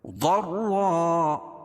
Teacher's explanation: رائے مشددہ کے اوپر زبر یہ پیش ہو تو را کو پور پڑھیں گے. یہاں زبر ہے، دو زبر ہے، ضرا.